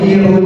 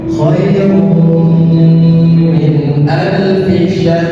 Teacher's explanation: idgam memasukkan tanwin kepada mim kirum ditahan. Jadi bacanya bukan kirun bukan seperti itu.